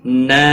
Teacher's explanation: نا یہاں پر مد منفصل ہے، 3 الف کے برابر کھینچ کر پڑھیں گے۔